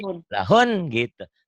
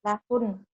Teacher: Lahun maksudnya yang saya maksud panjangnya di N-nya, di ujungnya.